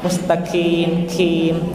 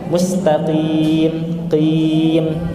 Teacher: ketika menyebutkan mustaqim, kalau keluar nafas itu pakai kaf